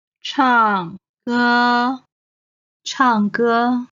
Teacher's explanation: 唱 is the fourth tone. 歌 is the first tone.